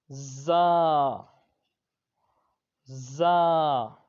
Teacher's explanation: یہ حروف صفیریہ کا حرف ہے، اس میں سیٹی کی آواز آئے گی